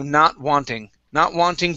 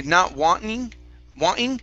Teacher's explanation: use a flap t so we want to say wan ding instead of ting in a really hard t it's going to be like a d